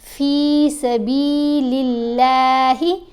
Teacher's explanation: اب یہاں پر دیکھیں اس لام کے نیچے زیر ہے نا، تو اب اللہ کی لام کو ہم نے باریک پڑھا